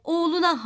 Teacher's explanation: sözcüğü cık ekini alınca K ünsüzü düşmüş ve ufacık haline gelmiştir oğul sözcüğüne de a eki gelince u ünlüsü düşmüş ve oğluna haline gelmiştir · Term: ses düşmelerini